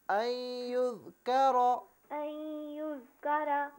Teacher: اس میں کاف کو باریک پڑھیں اور را کو پر کر کے پڑھیں